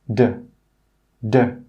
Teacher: when you make the d sound, you release less air than when you make the t sound. So start by putting your tongue to the top of your mouth, just behind your top front teeth.